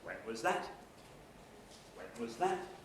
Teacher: when was that low rise everybody happy with low rise